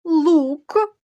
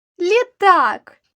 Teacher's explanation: лук перший приголосний звук твердий л літак перший приголосний звук м'який лі